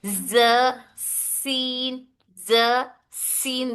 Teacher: दोनों भी जबान के किनारे नोक ऊपर के दांतों के किनारे से अदा होता है।